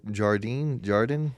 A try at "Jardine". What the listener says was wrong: this whole time everyone's been saying Jardine, but it's Hardine.